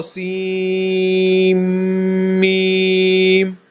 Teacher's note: یہ نون جو آتا ہے یہ غائب ہو جائے گا، سیم میم ہو جائے گا. سیم میم، سین میم نہیں، سیم میم.